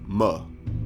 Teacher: creating a complete obstruction of airflow with the top and bottom lip while breathing through your nose then switching your breath as you release the closure you produce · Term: voiced by labial nasal